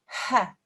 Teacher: it comes from the middle of your throat okay huh it's quite a sharp sound huh if you touch the middle of your throat you should